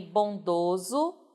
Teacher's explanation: você tem bondoso no masculino perceba que a vogal tônica é fechada